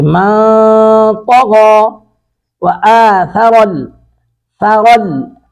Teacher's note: ثا کو باریک پڑھیں گے نرمی کے ساتھ، را کو پر کر کے پڑھیں گے ، ثرل حیا، حا کو حلق سے ادا کریں گے، حیات